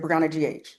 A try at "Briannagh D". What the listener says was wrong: GH is silent.